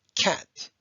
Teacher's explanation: if you put your hand in front of your mouth when you say the word cat you can feel a little bit of air coming out you're pushing air out to make it but if we do